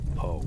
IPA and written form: poʊ (Poe)